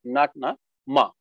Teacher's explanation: in MA sound the air is actually going through your nasal cavity and coming out that's why you are having that you know nasalized you know